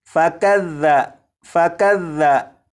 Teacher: यहाँ पर देखें, ये जो लफ्ज़ है, इस लफ्ज़ में यहाँ पर ज़ाल है। ज़ाल को नरमी से पढ़ेंगे, यानी सीटी की आवाज़ के बग़ैर पढ़ेंगे।